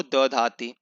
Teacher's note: जिसमें ध को अल्प प्राण होकर के द धाति ऐसा बन जाता है, ठीक है। ध धाति को द धाति।